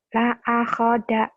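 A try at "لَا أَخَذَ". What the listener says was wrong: jangan putus. La akhoda, biasa aja. La akhoda, la akhoda, gitu. Jangan ditekan.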